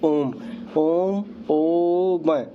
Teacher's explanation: इसके उच्चारण में तीन मात्रा का समय लगता है इसलिए इसे त्रि मात्रिक स्वर भी कहते हैं